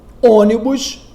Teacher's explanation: Ônibus, cuja sílaba tônica é o on.